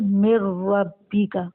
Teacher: نون ساکن ہے، اس کے بعد را ہے تو یہاں ادغام ہو رہا ہے لیکن غنہ کے بغیر